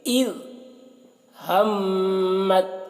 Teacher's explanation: میم میں غنہ کریں گے اور یہاں پر ساکن اور مشدد حرف ایک ساتھ ہے، تا ساکن ہے اور طا مشدد ہے، تو جب ساکن اور مشدد حرف ایک ساتھ ہو تو اس وقت ساکن حرف کو نہیں پڑھا جاتا، تو یہاں پر تا کو نہیں پڑھا جائے گا، میم کو طا کے ساتھ ملا کر پڑھیں گے۔